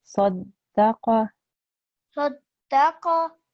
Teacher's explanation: It was just the qa sound that I wanted to make sure you pronounce by your throat.